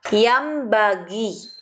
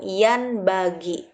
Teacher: mengubah suara nun mati atau tanwin menjadi huruf mim. Jangan lupa harus disertai dengung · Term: iqlab